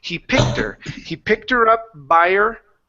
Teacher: one thing that you can do is drop your H's on her